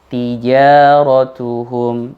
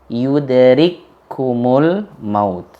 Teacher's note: Kaf yang disukun yang bertemu dengan kaf. Jadi seolah-olah yudrikumul, seolah-olah itu satu kata. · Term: idgham mutamathilain